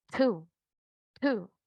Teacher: Entonces, como digo dos, two, two, esa pequeña explosión, siempre que inicien las palabras con la T. El número dos en inglés tiene una explosión pequeña en el sonido T al inicial.